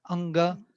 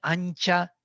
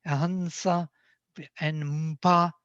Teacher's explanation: So nasals will be associated with the consonant which follows.